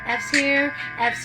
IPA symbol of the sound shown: f